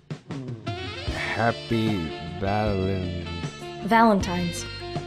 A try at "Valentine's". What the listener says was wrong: Valentine's. Valentine's with an N. No, not Valentine's. Valentine's, like the tines on a fork.